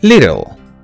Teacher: a flap t means it sounds kind of d in between d and t